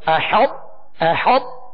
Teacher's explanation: یہ حا کو طا سے اس طرح ملائیں گے کہ طا کی جو صفت جو پر ہونے کی جو خوبی ہے وہ پہلے ظاہر ہوگی